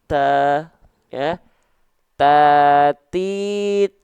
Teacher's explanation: Huruf ta itu dilafalkan ujung lidah kita disentuhkan ke pangkal gigi seri atas kita